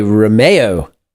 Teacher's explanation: in Russian we put the stress on the second syllable in Romeo